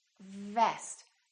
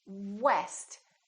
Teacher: say vest make sure that it doesn't sound like West so V is just a lower lip touching the upper teeth vest and W West we round our lips and the lower lip doesn't touch anywhere